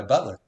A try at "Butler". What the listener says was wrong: see, that sounds like Butler Gardens. Butler. We don't do that ER. take that off and put the A on you.